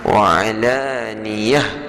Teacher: jika kita berhenti ta marbutah dia akan bertukar jadi ha